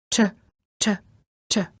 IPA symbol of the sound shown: tʃ